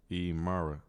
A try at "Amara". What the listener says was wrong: Amara. Yeah. Like an A.